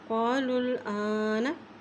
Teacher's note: लाम की पेश को इस लाम के साथ मिला रहे हैं क्योंकि लाम के ऊपर जज़म है और हमज़ा के ऊपर खड़ी ज़बर है इसलिए इसको एक हरकत लंबा पढ़ेंगे।